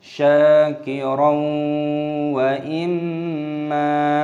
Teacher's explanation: fathah tanwin bertemu dengan wawu, hukumnya dibaca idgham bi gunnah, dimasukkan dan disertai berdengung · Imma, sya ada tanda alif, memanjangkan syin, syakir (fathah tanwin bertemu wawu) , kaidahnya dibaca idgham ghunnah, disisipkan dan diiringi senandung,